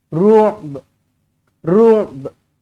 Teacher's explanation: Matikan ain, lepas tu ada ba sikit je dekat hujung.